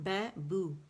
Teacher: بو باریک ہے, دونوں ہونٹوں کو آپس میں ملائیں گے سٹریس کے ساتھ